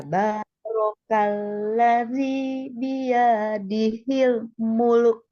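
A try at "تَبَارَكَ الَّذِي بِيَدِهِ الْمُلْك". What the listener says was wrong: Iya-nya kepanjangan, Bu. Tabarakalladzi biyadihil mulk.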